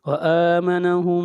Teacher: میم ساکن کے بعد میم آ رہا ہے تو یہاں پر ادغام ہوگا، میم کو میم کے ساتھ ملا دیں گے